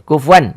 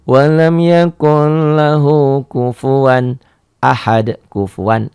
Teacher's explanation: Jadi tanpa ada penekanan, tanpa ada penahanan, jadi gitu idhar itu.